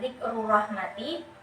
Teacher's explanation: ada huruf ro berharokat dhamma dan berharokat fathah, itu termasuk ke dalam hukum bacaan ro tafkhim atau ro yang dibaca tebal